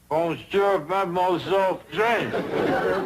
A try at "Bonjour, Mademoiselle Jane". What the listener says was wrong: That's very good, except for the mwah sound. Must be soft. Mwah. Watch my lips closely. Mwah.